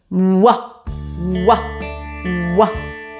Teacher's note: And it's the movement of the lips away from that like kissy face that makes the w sound.